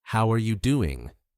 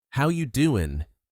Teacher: The G disappears and the rhythm becomes smoother.